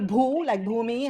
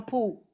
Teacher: For example, the ba, which is the bilabial voiced, has gotten mapped to a p, like pen, or like bude has become pude, behen has become pen, and then the aspirated voiced bha has also got mapped to a p